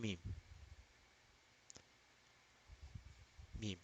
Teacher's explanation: Because the the path is blocked. In case of meme, the path is blocked through the lips being sealed. The lips are together. They don't allow the air to pass. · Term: nasal letters